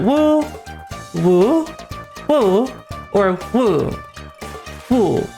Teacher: It's flat, rising, falling, then rising, and falling. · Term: 4 intonations in Mandarin